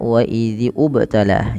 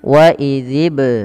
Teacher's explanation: tapi dibaca langsung ke bnya dan sembari dipantulkan huruf bnya